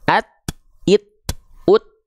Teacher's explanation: Bukan ats, its, uts, nggak ada s-nya ya, nggak ada bunyi desisnya ya, nggak ada. Ya, cuman percikan nafas, bukan desis, bukan.